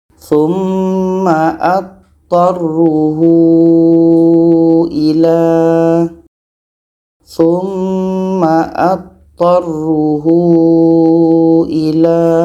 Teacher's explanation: Ada ha dhamir, panjang waw kecil bertemu hamzah. Ini mad silah tawilah. Panjang 4 sehingga 5 harakat.